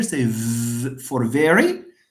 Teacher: Say v for very these vibrate. So here the vocal cords are not far apart and the air does not move freely. This is why you hear these audible these vibration.